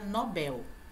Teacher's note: Nobel não é paroxítona é oxítona